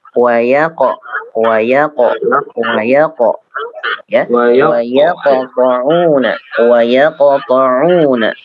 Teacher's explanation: Untuk qalqalahnya langsung Pak ya, tidak dikasih jarak